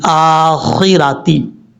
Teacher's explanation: خوا حروف مستعلیہ میں سے پر پڑھا جائے گا، را کے اوپر زبر را بھی پر پڑھا جائے گا۔